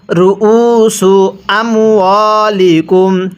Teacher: কিভাবে পড়ব? র পেশ রু, হামজা ওয়াও পেশ উ, এক আলিফ টান দিব।